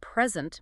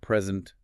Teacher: Stress on the first syllable, present, means a gift. And on the second, present means to give.